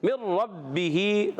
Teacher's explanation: ہا کے نیچے کھڑی زیر ہے، ایک الف کھینچنا ہے